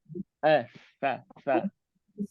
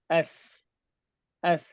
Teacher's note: Lidah kita, ujung lidah kena bawah gigi kacip atas ni. Sikit saja terkeluar.